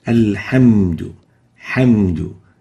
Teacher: We should pronounce the ha as a ha, like this, alhamdu, hamdu, and not khamdu or ghamdu